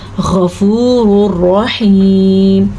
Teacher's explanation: غین کو پر پڑھنا ہے کیونکہ غین حرف مستعلیہ میں سے ہے اور الرحیم جو ہے اس کو بھی پر پڑھنا ہے کیونکہ را دو زبر، را دو پیش رون ہے اور آگے را کے اوپر زبر بھی ہے۔